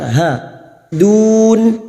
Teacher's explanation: Mad arid lissukan we lengthen for four harakat.